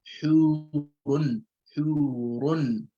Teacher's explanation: So the Ra will be pronounced with a full mouth. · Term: At-Tafkheem